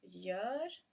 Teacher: G followed by Ö is as in the word gör is soft, so it's almost like a y sound, like a y sound, soft y sound, or like the Swedish j, y.